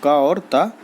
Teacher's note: तो दोस्तों अघोष जो अल्पप्राण ध्वनि है वो का और ता है